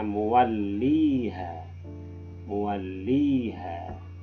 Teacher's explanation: huruf H ini jatuh setelahnya alif, maka dia harus dibaca panjang 2 harokat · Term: mad tabi'i